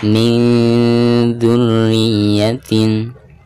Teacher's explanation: Nun sukun berhadapan dengan huruf ikhfa dzal, maka suara nun sukun tersebut harus disamarkan disertai dengan gunah. Dan tingkat kesamaran dan gunahnya itu seimbang.